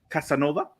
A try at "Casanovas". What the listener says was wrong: There's an S in that. There's an S in it's Casanovas. No, you're drinking for an S, bro.